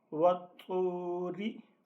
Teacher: واو زبر طا وط، طا پیش واو، تو، وطو، را زیر ری، وطوری، یہ طا پر بھی پڑھا جائے گا اور طا کو ایک الف کی مقدار لمبا کر کے پڑھنا ہے حروف مدہ کی وجہ سے